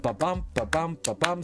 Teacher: it's unstressed, stressed, unstressed, stressed for 10 syllables every single line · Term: iambic pentameter